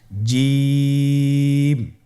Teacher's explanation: এর মাখরাজ হলো জিহ্বার মধ্যখান তার বরাবর উপরের তালুর সঙ্গে লাগিয়ে উচ্চারিত হয়